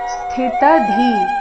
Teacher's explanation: ಸ್ಥಿತಧೀ, ಸ್ಥಿ ನಲ್ಲಿ ಥ, ಥಿ ಮಹಾಪ್ರಾಣ. ಸ್ಥಿ ಅಲ್ಲಿ ಥ ಏನಿದೆ ಅದು ಮಹಾಪ್ರಾಣ, ಮುಂದೆ ತ ಇದೆ. ಅದರ ನಂತರ ಮತ್ತೆ ಧಿ ಮಹಾಪ್ರಾಣ ದೀರ್ಘ ವಿಸರ್ಗದ ಉಚ್ಚಾರಣೆ ಅರ್ಧ ಖ ರೀತಿ.